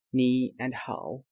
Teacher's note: Here you can see that if 2 characters with third tone are gathered together, as here ni and hao, both are third tone. So if 2 third tones are gathered, we will change the first third tone into second tone. Okay, the second third tone will remain same.